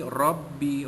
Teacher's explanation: Zu birabbi, rabbi, ra tu beri atas dibaca tebal tafkhim